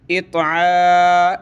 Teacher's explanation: کھڑا زبر ایک الف کی مقدار اوپر کھینچیں گے